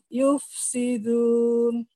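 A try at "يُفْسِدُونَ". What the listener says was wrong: Enggak, bukan. Du-nya diayun. Yufsiduna.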